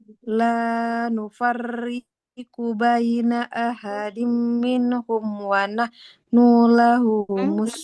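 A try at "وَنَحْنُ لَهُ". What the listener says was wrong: Jangan wa nahnu. Kan huruf berharakat dhamma boleh panjang kalau ada wawunya. Wa nahnu lahu muslimun. Jadi nunnya nggak boleh dipanjangkan.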